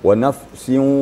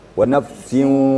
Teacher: Gunnahnya kurang. Jadi wa nafsin dua gerakan jadilah.